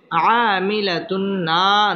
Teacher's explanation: বাম পাশে খালি আলিফ মদের হরফ একালিফ টেনে পড়তে হবে আমিলাতুন তানবিনের বামে নুন আসছে এটা হচ্ছে ইদগামে বা গুন্না গুন্নার সহিত মিলিয়ে পড়তে হবে